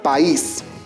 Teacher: se produce el hiato unión de dos vocales pero en diferentes sílabas